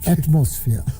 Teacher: I pronounced the word atmosphere with the accent of the second syllable